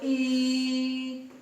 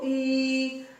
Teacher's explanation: ਜਦੋਂ ਅਸੀਂ ਬੋਲੇ ਈ, ਤੁਸੀਂ ਖੁਦ ਦੇਖੋ ਈ, ਜੀਭ ਆ ਜਿਹੜੀ ਉਹ ਉੱਪਰਲੇ ਤਾਲੂ ਦੇ ਨੇੜੇ ਚਲੀ ਜਾਂਦੀ ਹੈ। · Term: ਉੱਚੇ ਸਵਰ